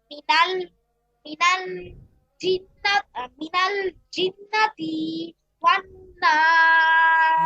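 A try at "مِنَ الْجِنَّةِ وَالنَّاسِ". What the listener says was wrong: হ্যাঁ, জিন্নাতিতে যেন টান না হয়। মিনাল জিন্নাতি ওয়ান নাস।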